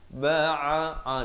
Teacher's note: Ba'a di pertengahan kerongkong